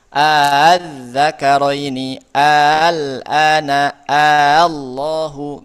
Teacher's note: di hamzah yang keduanya dibaca lembek, tidak jahar. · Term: tashil